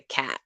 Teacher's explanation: It's like a cat is a very spread vowel, and that's the way I produce it.